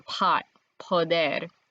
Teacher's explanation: we might be used to saying poder with a lot of air like in pot